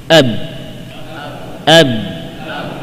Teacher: Ba dengan merapatkan dua bibir dan memberikan tekanan yang kuat.